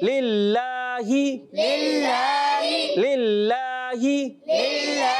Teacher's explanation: للہ میں اللہ پاک کے نام سے پہلے زیر آ رہی ہے، اس وجہ سے یہ باریک ہو جائے گا